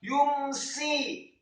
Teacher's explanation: Ya-nya dibaca dhammah 1 harokat, kemudian mimnya disukunkan